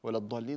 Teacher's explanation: طبعا ست حركات مديها ست حركات